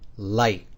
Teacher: it kind of had the sound of an AI that was very short